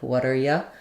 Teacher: the U can become a y and the t is flapped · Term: reduction